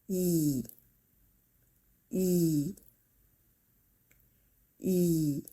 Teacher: spread your mouth without opening it too much, and your tongue should rise up close to your palete, but it shouldn’t touch your palete